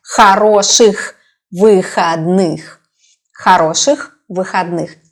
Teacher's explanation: H sound is stronger than, for example, in the word he in English.